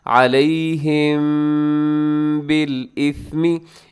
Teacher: तज़ाहरून अलैहिम बिल इस्मी, अब अलैहिम के आखिर में मीम साकिन है, मीम साकिन के बाद बा है, तो आप कानून याद कीजिएगा कि यहाँ पर इख्फा शफवी हो रहा है। मीम साकिन के बाद जब बा होता है तो मीम साकिन की आवाज़ को नाक में छुपाते हैं